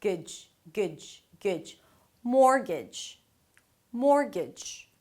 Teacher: It's a 'g' sound and then a 'j'. The T there is silent, it doesn't really exist, only in the spelling.